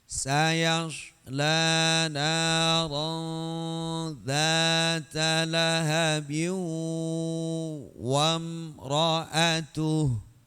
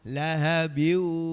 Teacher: Lahabin harus gunnah, harus dengung. Lahabin itu belum gunnah.